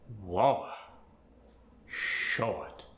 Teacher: Words that get the or sound, like war and short, get the aw sound with a W following the aw.